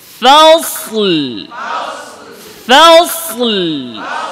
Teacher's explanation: صادر মোটা হবে, ফার চিকন হবে।